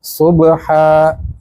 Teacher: ہا گلے سے ہوا نکلنی چاہیے